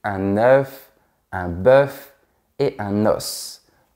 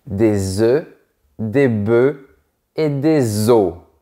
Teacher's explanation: Oui, le F et le S ont disparu de la prononciation.